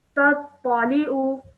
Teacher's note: ayn only has a simple dhamma on it, okay? So don't stretch the sound out too long, just 1 second, okay? Li'u.